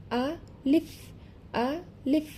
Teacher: লক্ষ্য করুন, যদি ভেঙে উচ্চারণ করি আ লিফ, যখন আমি লিফ বলছি সেক্ষেত্রে সামনের উপরের 2 দাঁতের আগা নিচের ঠোঁটের পেটের সাথে লেগে হালকা একটু বাতাস জারি থাকবে, অর্থাৎ চালু থাকবে।